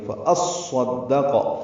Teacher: صاد اور دال دونوں مشدد ہیں، ان کی تشدیدیں ضائع نہ ہوں یا مس نہ ہوں.